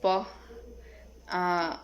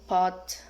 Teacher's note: Characteristic bilabial, voiceless, and stop.